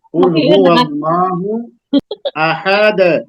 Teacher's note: اب یہاں دال پہ آپ کو قلقلہ کرنا ہے وقف کی وجہ سے